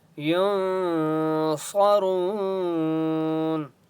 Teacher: ینصرون نون کے اوپر سکون ہے اس لیے یہاں پر اخفا ہوگا. صاد مستعلیہ میں سے اس لیے صاد کو موٹا پڑھیں گے.